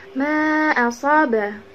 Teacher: Ma ini dibacanya panjang. Dibaca bisa 2 harokat, 4 harokat ataupun 5 harokat. Kemudian setelah ma ini dia terdapat huruf alif. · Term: mad jaiz munfasil